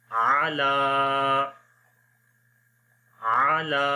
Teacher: عین کو نہیں لمبا کریں گے، اونلی لام کو لمبا کریں گے